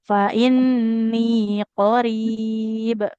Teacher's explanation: Fa inni nunnya juga panjang di sini.